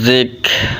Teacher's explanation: Di atas huruf kaf ada tanda sukun. Ketika huruf kaf ini mati, hukum bacanya hamas, maka kafnya keluar angin